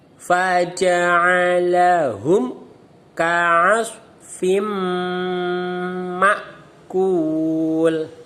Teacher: Tanwin bertemu mim. Namanya idgham bi gunnah. Dibaca dengung.